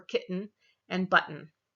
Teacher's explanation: we really have something that's very close to what is a glottal stop for most of us, for kitten and button